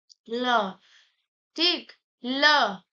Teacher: पार्श्विक व्यंजन ल है, मतलब इसको बोलने पे हमारी जीभ पूरी मुड़ के पीछे चली जा रही है